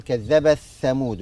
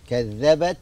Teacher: نلاحظ هنا في بعض الناس يضغم التاء في الثاء، يقول كذبت ثمود. لا، كذبت، يعني لابد من الهمس التاء